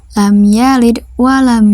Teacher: bunyi mim disuarakan dengan terang dan jelas tanpa berdenggung di bibir dengan mulut tertutup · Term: Izhar Syafawi, izhar syafawi